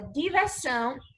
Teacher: a última sílaba da palavra diversão é a sílaba tônica, é a sílaba mais forte. Portanto, essa palavra diversão é uma palavra oxítona.